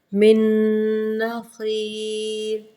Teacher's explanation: میم زیر نون اس سائلنٹ ہو جائے گا، اس کو اس نون کی تشدید کے اندر ادغام کریں گے. من، غنّے کو 2 سیکنڈ رکھیں گے.